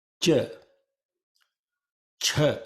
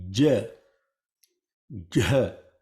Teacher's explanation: with the tongue now touching the pallet ch ch J J when you say CH there is not that much of use of the throat or The Voice or the vocal cords and when you say J sound is coming deeper level Now